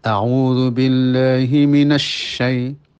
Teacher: Adapun panjangnya minas itu bukan karena tasdid tapi karena syin itu memiliki sifat rikhwah suara mengalir